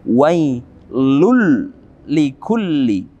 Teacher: kita memasukkan langsung tanpa kita baca tanwin ya tapi kita ganti dengan lam bertasydid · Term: idgham